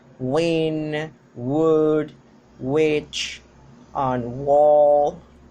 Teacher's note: by its voicing, it is voiced, and place of articulation is labiovelar, or velar also can be called, and the manner of articulation is approximant. · the W sound, which has a double place of articulation because it is articulated at the labial cavity and the velar